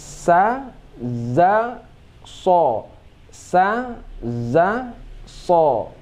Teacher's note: Jadi merubah hujung bibir saja, sedangkan tempat keluarnya sama.